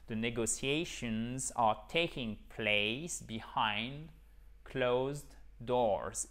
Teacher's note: The negotiations, on fait bien le z pour le pluriel